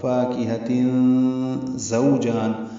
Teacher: زا کو تیز صفیر کی آواز سے ادا کرتے ہوئے واو سے ملائیں گے، یہ واولین ہے.